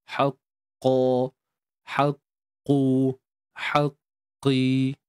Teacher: Untuk qaf ni dia huruf isti'la, huruf yang terangkat pangkal lidah untuk menghasilkan suara tebal. · Jadi bila qaf ni haqqi, bila kita sebut qi tu pun masih lagi tebal lah. Cuma dia tidak setebal seperti baris atas.